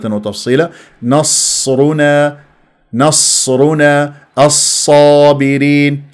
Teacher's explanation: ساكنه فيها صفير ويجري الصوت فيها والنفس · هي النون مرققه ليش تفخمها